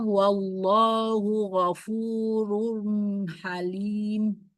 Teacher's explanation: Wallahu lafuz jalalah dibaca tebal karena sebelumnya fathah dan dibaca 2 harokat karena mat. Hu ghafurun matobi iwaw sebelumnya domah.